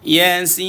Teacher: Jadi ra ni dibaca dengan nipis. Bila nipis, mulut kita senyum.